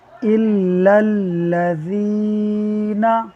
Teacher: آگے والے لام کو دیکھیے الذین والا لام، اس لام سے پہلے زبر ہے اور یہ لام چونکہ اللہ اسم جلالت کا نہیں ہے لہٰذا اس کو بھی ہم پر نہیں پڑھیں گے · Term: باریک